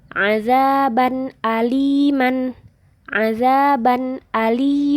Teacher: Enggak ada dengungnya enggak ada samarnya